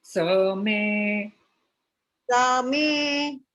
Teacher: विसर्ग यहाँ पर लोप शाकल्यस्य इस नियम के कारण लोप चला जाता है